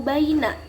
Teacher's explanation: Pada baina ini hukum bacaannya yaitu haraf lin, dilemaskan, tidak dipanjangkan.